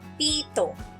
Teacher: Sa salitang pito, ang unang pantig din ang may diin.